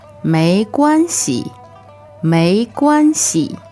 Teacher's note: So may, second tone, right? It's rising. M-E-I, second tone, 没.